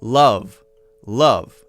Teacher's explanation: We want some air flowing through so that it makes that sort of wind noise. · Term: the V